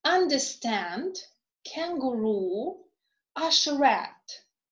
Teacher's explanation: in this case already the third syllable is stressed